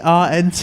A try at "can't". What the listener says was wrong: There's no R in it.